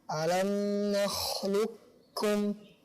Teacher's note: Maksudnya qafnya langsung masuk ke kaf. Jadi tidak ada bekas qafnya, idgham kamil.